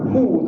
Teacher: Walam yakul lahu hu. Hu tu kita baca dia dua harakat. Kenapa? Sebab dari segi mengenali bentuk, selepas ha dhamir itu ada waw kecil itu kan. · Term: mad silah